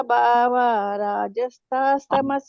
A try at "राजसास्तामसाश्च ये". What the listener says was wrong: ಅಲ್ಲಿ ರಾಜಸ ತಾಮಸ ಅಲ್ಲಿ ದೀರ್ಘನೆ ಬರ್ತದೆ. ರಾಜಸಾಸ್ತಾಮಸಾಶ್ಚ ಯೇ